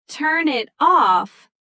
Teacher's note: Turn it off often sounds like turn it toff, all blended into one smooth sound. So the ending consonant basically borrows itself out to the next word.